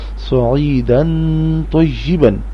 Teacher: اب یہاں تنوین میں سے یعنی دو زبروں میں کے بعد طا ہے اور طا حروف حلقی نہیں ہے، اس لیے تنوین کی آواز ناک میں سے آئے گی